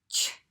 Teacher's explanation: when you put ch in front, you will feel that air hit your hand all at once. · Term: burst of air